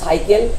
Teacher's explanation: বাংলায় প্রচলিত বিদেশি শব্দে দন্তেস্ব উচ্চারিত হয়